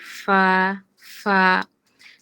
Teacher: নিচের ঠোঁটের পেট সামনের উপরের দুই দাঁতের আগার সাথে লাগিয়ে উচ্চারিত হয় ফা